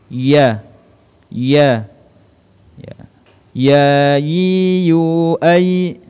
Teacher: huruf ya, tengah-tengah lidah kita disentuhkan dengan langit-langit.